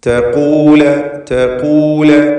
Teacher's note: ഈ പദത്തിൽ ഖാഫിന് മാത്രം നിസ്ബിയായ തഫ്ഖീമുണ്ട്